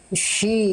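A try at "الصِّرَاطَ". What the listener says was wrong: Ah, itu shi. Yang naik itu tengah lidah. Yang naik bukan bagian yang ini Bunda, bukan tengah lidah. Tapi yang ini nih. Kalau yang ini yang naik jadinya sh, bukan sh, tapi sli. Tengah lidah nggak naik. Sli.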